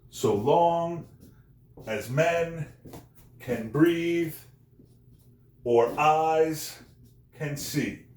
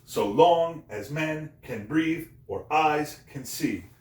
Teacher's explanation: Unstressed, stressed, unstressed, stressed, unstressed, stressed, unstressed, stressed. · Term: iambic pentameter